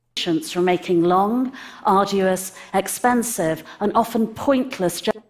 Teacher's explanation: i didn't hear a t sound from this british person expensive and often point no she didn't say the t sound